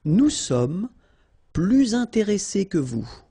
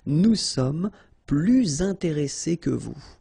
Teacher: you make this little link, little liaison between the two, so you hear a little bit this S